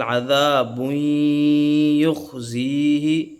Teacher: تنوین کی مثال عذاب یخزیہ، اب اس میں تنوین کے فوراً بعد یا آ رہا ہے، اور وہ ینمو کے لفظ ینمو میں جو یا ہے، یا جو ہے تنوین کے فوراً بعد آ رہی ہے تو ادغام جو ہے غنے کے ساتھ ہوگا